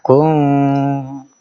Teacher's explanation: Iya, kunnya itu ikhfa didengungkan dulu